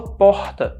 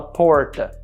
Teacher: O nosso R é o H, então a gente fala porta, ao invés de falar porta.